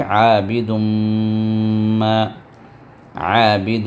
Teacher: تو اب ہم پڑھیں گے ولا انا، پھر عابد میں عین ہے عابد، پھر اس کے بعد دال کو تنوین آ گئی اور اس کے بعد میم کو شدہ آ گیا۔ اب جہاں میم کو شدہ آتا ہے وہاں پر ہم اس میم پر غنہ کرتے ہیں، 2 حرکت تک اس میم کو دبا کر رکھتے ہیں